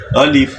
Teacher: الف کا حروف مدہ، اونچی الف، واو، یا، جوف دہن یعنی منہ کا، خلا، جوف دہن یعنی منہ کا خلا، خلا، خالی حصے سے یہ جو الف ہے یہ ادا ہوتا ہے